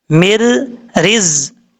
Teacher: میم کے بعد جو نون ہے اس نون کو چھوڑ دینا ہے، میم کو ڈائریکٹ را کے ساتھ کنیکٹ کرنا ہے جس را کے اوپر شد ہے. مر من رز کی نہیں پڑھنا، مر رز اس طریقے سے پڑھنا. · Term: ادغام